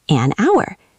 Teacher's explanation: H is silent. It sounds like ow. Vowel sound.